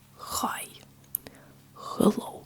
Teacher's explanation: the H sounds in Russian it's it's a little bit stronger in Russian